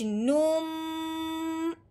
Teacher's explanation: गुन्ने का मतलब क्या है कि जब ये शाद होती है ना मीम के ऊपर, तो जब मीम का गुन्ना होता है कि हमने मुंह बंद करना है और नाक में से आवाज निकालनी है